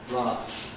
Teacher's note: One of the most noticeable differences between a general American pronunciation and received pronunciation is the quality of the vowel in words like lot, where we have rounding, back-rounded vowel, or. Americans more typically have an unrounded, not quite so back vowel